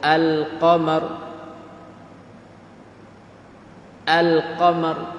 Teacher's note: Kalau jauh, dia panggil alif lam qamariyah. Kerana dia zahir, dia izhar akan lam.